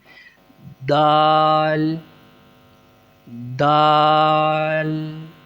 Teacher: تا کی طرح زبان کی نوک کو اوپر والے دانتوں کی جڑ سے ملا کر ادا کرنا ہے